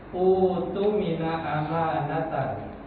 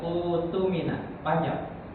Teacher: Nah, ini hamzah pertama berharokat dhamma dan hamzah kedua bertanda sukun. Maka hamzah yang kedua diganti dengan wawu sehingga termasuk daripada mad badal. Dibaca menjadi utu mina amanatahu.